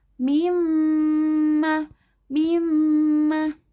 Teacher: sumber suara huruf mim adalah dari dua bibir ditambah dengan rongga hidung sedikit. Namun dalam kondisi tertentu, huruf nun dan mim selain dari sumber asalnya ditambah dengan dengung yang bersumber dari rongga hidung.